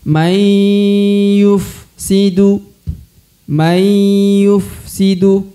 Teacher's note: Perhatikan huruf nun sukun bertemu huruf ya, maka dia harus dibaca dengungnya. Ini idgham bi gunnah atau huruf dengung ya, maka harus ditahan 2 harokat lalu didengungkan.